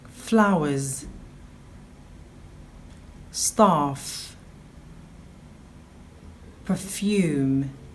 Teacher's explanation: This is a Fortis Labio-Dental Fricative.